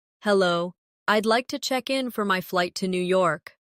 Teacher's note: Notice how check in sounds like one smooth unit. No pause in the middle.